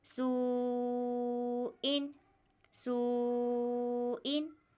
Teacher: 4 अलिफ के बराबर हमें खींचकर पढ़ना है, यानी 4 सेकंड तक हमें खींचकर पढ़ना है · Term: मद्दे मुत्तसिल